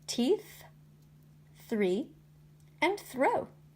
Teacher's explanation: I placed my tongue between my teeth for the th sound